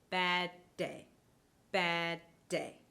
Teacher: I held that stop part on the d sound a little bit longer before letting out the plosive.